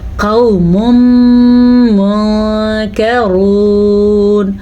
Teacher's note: یمون میں سے میم آنے کی وجہ سے یہاں پہ ادغام بالغنہ کا قاعدہ ہو رہا ہے، تو ان دونوں کو ملا کے پڑھیں گے